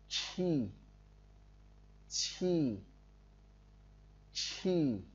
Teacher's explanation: Chữ này, chữ quy này phát âm tương tự như chữ chi nhưng bật mạnh hơi ra ngoài